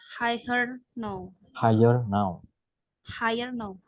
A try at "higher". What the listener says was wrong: don't read the uh the G yeah just higher just pronounce higher